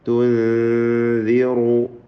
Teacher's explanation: തുൻദിറു സാക്കിന നൂൻ ഇഖ്ഫാ ചെയ്ത് മറച്ച് മണിച്ചോതുക. ഇഖ്ഫാ ഹഖീഖി റാഇന് തഫ്ഖീമുണ്ട്.